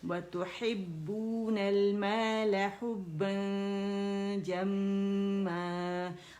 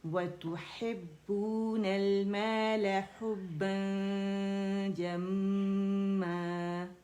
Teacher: حرف اخفا کو میں نے دیکھا جیم ہے تو میں نے با کی زبر ادا کی اور جو نون تھا اس کو چھپایا